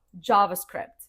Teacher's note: the stress is on the first syllable and the sound is like in jam or jacket, plus script, like movie script, you know?